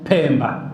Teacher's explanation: Sasa wanasema pa yenye mpumuo, Pemba. Hao umetoka pe, kuna mpumuo, si ndio?